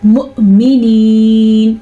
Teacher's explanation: حمزہ کے اوپر ساکن ہے تو چھوٹا سا جھٹکا پیدا ہوگا، لیکن جھٹکا ایسا ہو عین کی آواز نہ نکل جائے، یعنی کہ مو ایسے نہیں پڑھنا آپ نے.